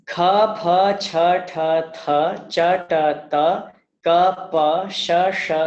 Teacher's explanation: Shvasa means that you say this only with your breath, not with your voice. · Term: shvasa, aghosha